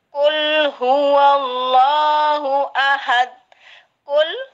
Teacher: Kadang-kadang ada yang dipantulkan, itu salah. Lam mati tidak memantul.